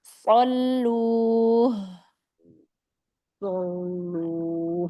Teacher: huruf shadnya isti'lanya diangkat ya